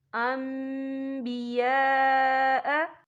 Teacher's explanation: یا دیکھیں یہاں نون ساکن ہے، نون ساکن کے بعد جو ہے با آ رہا ہے، تو یہاں پر اقلاب ہوگا یعنی تبدیلی ہوگی، تو ہم یہاں میم کا تلفظ کریں گے